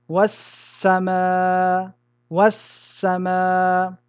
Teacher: Donc, ici, nous allons rentrer le L dans le sin, de telle manière que les deux lettres vont devenir une seule et même lettre du genre de la deuxième, c'est-à-dire le sin, en mettant une shadda sur celle-ci. Nous dirons was-sama, was-sama. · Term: idgham